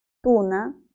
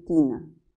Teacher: la primera, la U, es posterior y la I es anterior. Tienen en común la altura de la lengua, ambas son altas.